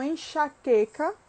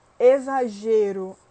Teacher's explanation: No caso do X, ele é um dos que vai ter uma diferenciação fonética, é um dos que tem a maior diferenciação fonética dentre as consoantes, porque ele assume o som de CH, de Z e de KS